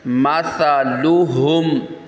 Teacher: ہا سینے سے نکلے گا، سا پہ سیٹی نہیں نکالنی